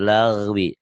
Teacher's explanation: kalau orang Sunda G-nya ketebelan